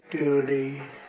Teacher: donald trump just uses a d sound here